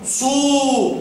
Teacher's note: حركه الضم صو استداره الشفتين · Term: حركة الضم